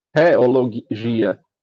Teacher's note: A gente vê, antigamente tinha, né, o farmácia com PH, o teologia com TH, mas ele não tinha o TH, originalmente, não tinha o mesmo som do T. Era um T com uma aspiração, por isso que tem um H ali. Era para ser dito tipo teologia, filosofia.